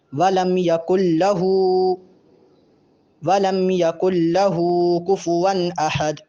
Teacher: یہاں یکن نہیں پڑھیں گے بلکہ کاف کو سیدھا لام کے ساتھ ملانا ہے، نون کی آواز بالکل نہیں آئے گی